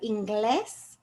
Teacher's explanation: when i say the word english i hear the stress on the e